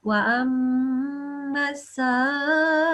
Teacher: So extra prolongation, and this is a meme mushaddad. So you will make a meme sound for 2 seconds.